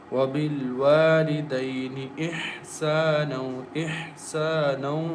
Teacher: Ha should be clear. Ha comes from the middle of the throat. And don't say ihsana.